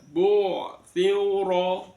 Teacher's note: ro-nya berharokat fathah, maka ro dibaca tafkhim, tebal